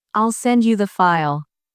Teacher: in the phrase, I'll send you the file, the stress is on send and file.